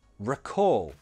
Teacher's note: The stress is on the second syllable. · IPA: /rəkɔːl/